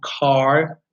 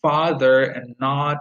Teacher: back its tensed there is tension when you pronounce it and it's unrounded because when you say for example car your lips are not round